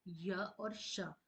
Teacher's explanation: उसके जो जितने भी क वर्ग में क ख ग घ और वो सब कंठ से बोले जाते हैं और वही हमारे उच्चारण स्थान के आधार पर कंठ वर्ण या कंठ व्यंजन कहलाते हैं। तालव्य जो कि तालु से बोले जाते हैं